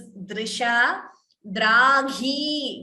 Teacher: Please note the first word. It is dr. It is not dru.